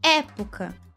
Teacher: Época tônica na antepenúltima. Proparoxítona.